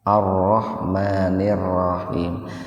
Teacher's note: Ro yang pertama itu tebal, Pak.